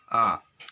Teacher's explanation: विवृत जिसका उच्चारण करते समय मुंह खुलता हो, मुंह ज़्यादा खुलता हो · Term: विवृत स्वर